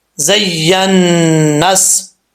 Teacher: نون کے اوپر شد ہے، ایک الف کی مقدار غنہ کیا جائے گا، نون اور میم کے اوپر شد تو غنہ کیا جاتا ہے ایک الف کی مقدار۔